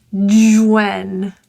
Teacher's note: The J links to when, it will sound like Jwen, like it's a little J. The H is silent in when.